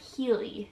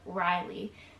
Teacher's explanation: in Portuguese, the R sounds like an H sound, so it's really, her name would sound like Healy instead of Rylie.